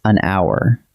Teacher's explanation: The H is silent, so what your ear actually hears is a vowel sound, ow.